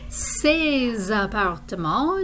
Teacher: we have a liaison because appartement begins with a vowel sound